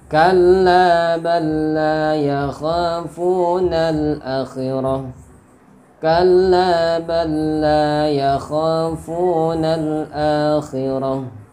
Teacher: lam sukun bertemu lam harokat. Jadi diidghamkan ke lam yang berharokat. Kalla balla, bal langsung ke sini. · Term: idgham mutamassilain